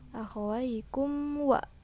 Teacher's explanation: idhar safawi karena mim sukun bertemu abjad wawu, dibaca jelas tidak disertai dengung.